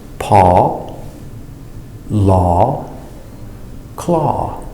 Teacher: Remember, no W sound, only open aw. Now we're looking at the sound AU makes.